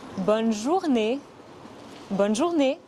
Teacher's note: ce n'est pas bon mais bonne ce n'est pas une voyelle nasale · Ce n'est pas une voyelle nasale. Le son « et » à la fin du mot « journée » est similaire au son « a » en anglais, mais en plus court.